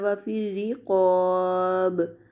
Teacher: وقف میں با ساکن ہوگا تو یہاں پہ قلقلہ ہوگا۔